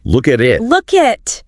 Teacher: the K links to the A, the T links to the I, the word boundaries vanish. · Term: linking